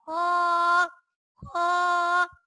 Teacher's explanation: خو، خو کے اوپر ایک نقطہ ہوتا ہے اور یہ حروف مستعلیہ میں سے ہے، اس لیے اسے پر یعنی موٹا پڑھیں گے۔ خو، اور یہ حلق کے اوپر والے حصے سے ادا ہوتا ہے